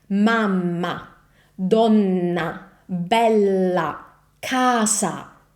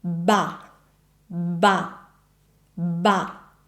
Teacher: All those words have Italian ah and it's always very open and pronounced this way. So anytime you see an ah in Italian, open up your mouth very well.